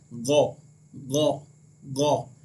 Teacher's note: ये हल्क के ऊपर वाले हिस्से से अदा होता है। जब हम गो कहेंगे तो हल्क के ऊपर वाला जो हिस्सा होता है वहाँ से आवाज़ जो है वो निकलती है।